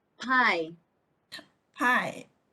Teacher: bilabial so made with two lips upper and lower lip